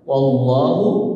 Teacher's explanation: Nah ini jadi apa? Wallahu, huruf waw harokatnya fathah, berarti tafkhim tebal. Tebalnya pada wallah, ya.